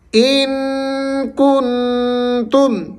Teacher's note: ان پر غنہ کرنا ہے، کن پر بھی آپ نے غنہ کرنا ہے۔